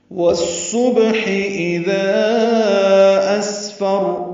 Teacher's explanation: واو کو صاد سے ملائیں گے، ادغام شمسی ہوگا، صاد پر پڑھیں گے ، با ساکن پہ قلقل ہوگا، ہا وسط حرک سے ادا · ذا الف مد ہے اور اس کے بعد حمزہ آنے کی وجہ سے مد منفصل ہے